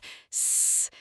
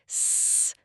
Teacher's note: It is a long continuous sound that doesn't stop until you run out of breath.